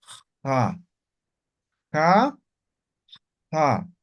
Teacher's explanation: la x es fricativa Ja como raspando